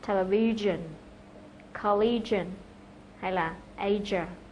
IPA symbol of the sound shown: ʒ